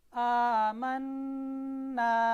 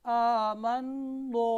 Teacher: ये अगर ऐसे पढ़ूंगा कवायद तजवीद के एतबार से ये गलत होगा, खूबसूरती भी नहीं रहेगी कलीमे में, क्योंकि नून यहाँ पर मोटा नहीं है, नून बारीक है